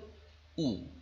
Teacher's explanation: ঠোঁট মানে ওষ্ঠ আর অধর এই দুটো প্রত্যঙ্গ অনেক গোলাকৃতি হয়ে যায়, কুঞ্চিত হয়ে গোলাকৃতি হয়, তাই না? এই কুঞ্চিত হয়ে গোলাকৃতি হওয়ার ফলে শ্বাসবায়ু এই কুঞ্চিত গোলাকৃতি হওয়া ওষ্ঠ অধরের উপরে এসে আঘাত হানে, এই জন্য একে ওষ্ঠ স্বরধ্বনি বলা হচ্ছে।